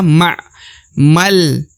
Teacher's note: Lalu terdapat alif lagi, lalu terdapat lam berharokat sukun. Maka huruf ma meskipun terdapat alif 2 kali, tapi tetap dibaca 1 harokat. Langsung masuk ke huruf lam ya.